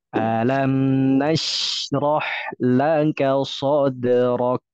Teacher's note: laka so langsung tebal ya. Laka sodrok ro posisinya tebal juga.